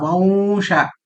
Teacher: वं ये वा की तरह होता है, नाक से आएगा थोड़ा साउंड ये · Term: अनुस्वार